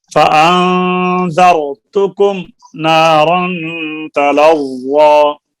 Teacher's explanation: غنہ ہے نارن کی تنوین کے اوپر، فأن اور فأن کے اوپر بھی غنہ ہے